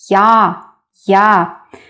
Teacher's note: It's similar to a, but we start with y sound.